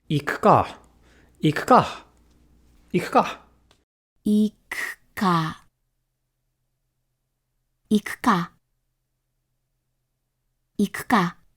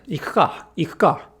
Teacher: it's simply much more natural not to voice high vowels between devoiced consonants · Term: unvoiced ku